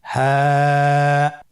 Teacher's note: হ্যাঁ হরফটি উচ্চারণ ক্ষেত্রে অবশ্যই বারিক হবে এবং 1 আলিফ টেনে পড়তে হবে।